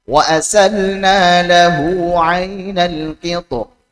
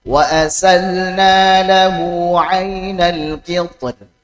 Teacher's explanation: Karena ra sukun ini dalam kondisi waqaf, dalam kondisi waqaf. Ra sukun sebelumnya isti'la sukun, sebelumnya lagi kasrah. Nah, maka ini kondisi boleh tebal, boleh tipis.